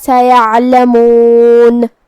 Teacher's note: ہم حرف العین کو حلق کے درمیان والی حصے سے ادا کریں گے اور جو کہ اس پہ جزم ہے تو ہمیں حرف العین کو ظاہر کرنا ہے.